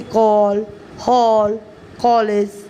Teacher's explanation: यह अ और आ के बीच की ध्वनि है